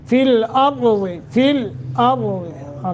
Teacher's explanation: را کو موٹا اس لیے کہ را ساکن ہے